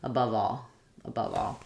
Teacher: we have the schwa, unstressed schwa, and the stressed schwa in above, and the ah vowel like in all in the word all, above all.